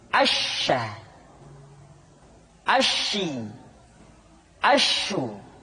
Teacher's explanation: nampak adalah apa yang disebut dengan sifat atafasyi yaitu menyebarnya angin di dalam mulut kita